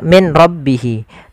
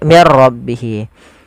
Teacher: berupa idgham bila ghunah yaitu adanya nun sukun bertemu dengan ro Apabila ada nun sukun bertemu dengan ro maka di sini jangan dibaca Min rbihi tapi diganti menjadi mirbihi · suara nunnya dimasukkan ke ra dan diganti menjadi r, maka menjadi mir ra, maka menjadi diganti dengan ra, maka mir ra. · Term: idgham bila gunnah